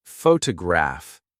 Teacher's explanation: photograph noun is stressed on the first syllable